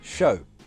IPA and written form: ʃəʊ (show)